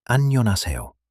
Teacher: Soft rise, then fall.